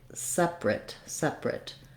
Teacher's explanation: stress and it sounds like separate separate so in this case we leave out this middle syllable and this letter A makes no sound and uh you might see it in the dictionary as awah